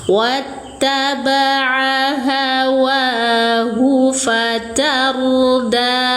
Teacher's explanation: Hu pendek ya, bukan mad silah qasiroh, tidak ada hukum panjang di sini tapi pendek. Wattaba'a hawahu fatarda, roknya baca tafkhim atau tebal.